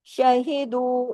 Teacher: دو جو ہے وہ 2 حرکات کھینچے گا